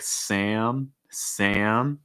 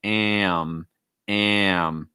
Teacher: when you have an a sound before an m it's going to break into two parts